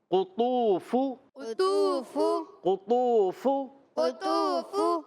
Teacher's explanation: फ पर पेश है हरकत है इसको नहीं खींचना ता वऊ पेश तू व मद्दा ता इसको खींचना है काफ · فا پر پیش ہے، حرکت ہے، اس کو نہیں کھینچنا۔ طا واو پیش، تو واو مدہ تھا، اس کو کھینچنا ہے۔ قاف پر پیش ہے، اس کو نہیں کھینچنا۔